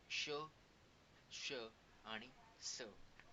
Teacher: उष्मे घर्षक म्हणजेच की उच्चार करताना एक घर्षण आहे गळ्यात, त्यालाच म्हणतो आपण उष्मे घर्षक व्यंजने.